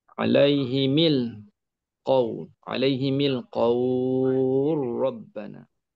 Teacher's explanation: ada idgham lam bertemu dengan ra